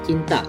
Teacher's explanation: afrika ini gabungan plosif dan frikatif. Contohnya itu T seperti C dalam cinta. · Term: africatif